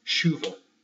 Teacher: the word for rain right make sense but because it's Portuguese the CH becomes an SH